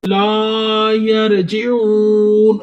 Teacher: لا پہ الف مدہ ہو رہا ہے، را کو تھوڑا سا موٹا کر دیں، اون پہ واو مدہ ہو رہا ہے، واو ساکن اس سے پہلے پیش، لا یرجعون۔